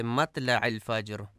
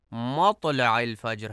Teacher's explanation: مطلع میں توئے کو تے پڑھا جاتا ہے، مطلع الفجر جو کہ درست نہیں ہے، درست ادائیگی مطلع الفجر ہے۔